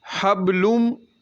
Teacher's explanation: اس کا قاعدہ یہ ہے کہ نون ساکن یا تنوین کے بعد آگے میم آ جائے تو اس صورت میں ادغام غنّے کے ساتھ کیا جائے گا، ادغام غنّے کے ساتھ کیا جائے گا، اور میم کے اوپر غنّہ کریں گے، آواز کو ناک میں لے جا کر اس کو ایک ساکن تک جو ہے وہ غنّہ کریں گے · با پر قلقلہ کمزور قلقلہ ہوگا، لام کے اوپر دو پیش ہیں تو میم مشدد ہے۔